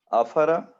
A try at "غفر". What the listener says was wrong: افر ہے غین ہے غین.